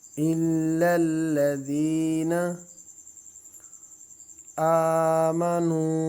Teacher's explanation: حمزہ کو ایک الف کی مقدار کھینچنا ہے کیونکہ اس کے اوپر کھڑی زبر ہے